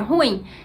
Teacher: boa parte da população brasileira fala ruim se fosse uma sílaba só